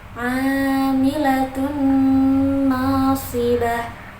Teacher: A-nya ini mat tabi'i karena huruf A-nya berharokat fathah bertemu dengan alif, dibacanya panjang 2 harokat.